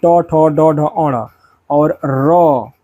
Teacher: इसका उच्चारण स्थान हमेशा मूर्धा यानी कि तालु का कठोर ऊपरी भाग होता है मूर्धा तो यह मूर्धन्य होता है।